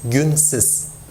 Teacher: if rounding would spread on the suffix, it should be günsüz. But it's not the case. It's günsiz. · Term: rounding harmony